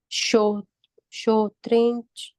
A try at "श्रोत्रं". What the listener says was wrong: शो नहीं है माता जी, श्रो। हाँ श्री बोलते हैं ना यहाँ पे, तो यहाँ पे क्या आएगा, श्रो आएगा, शो नहीं आएगा, श्रो।